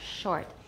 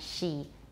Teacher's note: Less rounding for sh, and it'll sound more natural.